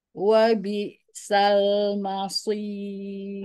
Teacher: Hati-hati, mainnya jangan jadi mall, tapi ma tetap tipis. Shotnya yang tebal.